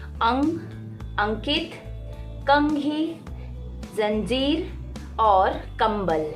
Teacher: ध्वनि जो है नाक से निकलती है और इसे हम बोलते हैं अनुस्वार